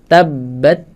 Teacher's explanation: Keluarnya hams saat makhrajnya dilepaskan ujung lidah dari pangkal gigi seri atas.